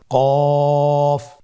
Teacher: কফের মাখরাজ হলো জিহ্বার গোড়া তার বরাবর উপরে তালুর সঙ্গে লাগিয়ে উচ্চারিত হয়। জিহ্বার গোড়া তার বরাবর উপরে তালুর সঙ্গে লাগিয়ে উচ্চারিত হয়।